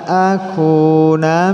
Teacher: nun mati bertemu alif, dibaca idhar jelas. Akunah dhammah bertemu dengan waw sukun, satu alif.